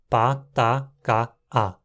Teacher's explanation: temos quatro oclusivas desvozeadas contrastando